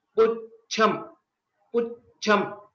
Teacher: Cha is a Mahaprana here, and it is also a Samyuktakshara, Ch and Ch. While we are pronouncing, we give a small pause or a bit extension after Pu.